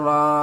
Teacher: مد کو 3 الف کے برابر کھینچیں گے بڑی مد ہے